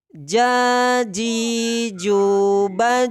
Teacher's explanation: tempat keluarnya dari pertengahan lidah dengan langit-langit atas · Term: huruf Jim